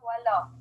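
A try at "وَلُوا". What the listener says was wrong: Walu. Walu. It's not walau, it's walu.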